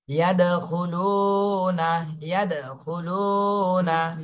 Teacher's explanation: পেশের বামে জজমালা ওয়াও, মাদের হরফ, এক আলিফ টেনে পড়তে হবে। · দালে জজম আসছে, দাল কলকলা করতে হবে।